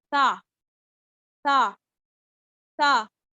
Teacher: ता के बारे में दो बातें याद रखनी है कि इसको हमने बारीक पढ़ना है और हमने इसको तलखी से नहीं पढ़ना, नरमी से पढ़ना।